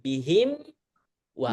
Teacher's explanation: mim dulu selesai. Baru ngebentuk wawu lagi. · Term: irja'u syafatain